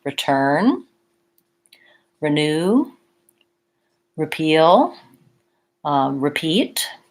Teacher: The rest of the time, and for most words, the RE is actually going to say a reduced vowel sound, ri · So for example, in words like return, renew, repeal, repeat, it has the reduced and lax I vowel